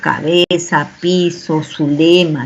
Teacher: todas esas palabras con Z las utilizamos con S